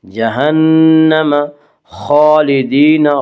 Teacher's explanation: خا کو پر پڑھا جائے گا، خا حروف مستعلیہ میں سے ہے، اور خا کے اوپر کھڑا زبر ہے، کھڑا زبر کو ایک الف کے برابر کھینچ کر پڑھیں گے۔